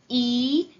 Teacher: The frontmost vowel sound, E, is produced with the lips pulled back in a big smile and the tongue high in the mouth.